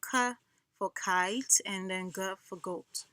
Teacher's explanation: vela sound has to do with the back of the tongue and the soft palate in the back.